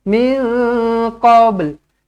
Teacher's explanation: Bermakna ba ni di tengah-tengah. Lantunkan qalqalah macam biasa dan matikan lam ini.